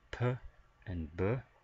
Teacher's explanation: p and b for bilabial, meaning we're using both lips